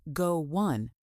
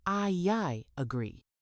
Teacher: When a word ends with a vowel sound and the next word starts with a vowel sound, native speakers often add a small W or Y sound to connect them. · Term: Linking vowel to vowel